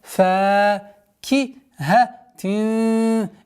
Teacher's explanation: Ихфа, мягкая ихфа в размере двух огласовок, удержание назализации.